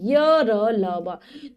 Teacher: इन व्यंजनों का उच्चारण करते समय जीवा मुख के किसी भी भाग को पूरी तरह नहीं छूती तथा इनके उच्चारण में स्वास का अवरोध बहुत कम होता है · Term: अंतः स्थ व्यंजन